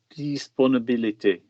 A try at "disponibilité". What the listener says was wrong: So the first one was lovely. What about the second vowel?